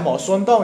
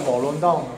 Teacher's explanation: 就是在连读的时候呢▁，S▁经常变成▁L